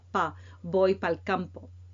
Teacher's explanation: in colloquial language you might not hear para, you might hear pa